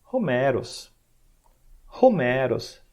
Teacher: Então isso, no nome grego desse poeta, isso está aparente aqui, ó, esse sinalzinho aqui, chama espírito áspero, espírito rude, né, ou simplesmente áspero. Então o áspero, ele indica que é soprado ao falar aqui o início da palavra.